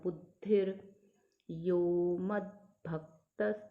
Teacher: अब द हम उच्चारण आधा करेंगे, ध का पूरा, यहाँ पे ध छोटा दिख रहा है पर ध का उच्चारण पूरा रहेगा।